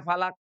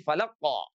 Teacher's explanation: oleh karena dia menebal maka fathahnya itu dia terdengar sangat dominan ya. Jadi bunyinya tidak falaq, tapi falaqo ya.